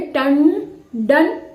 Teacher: इसलिए ट के ऊपर जो टंडन में जो बिंदी लगी है, जो अनुस्वार लगा है, उसमें ण की साउंड आ रही है, क्योंकि ड जो है वो ट वर्ग का है और इसका पांचवा वर्ण ण है, इसलिए टंडन ये आवाज आ रही है।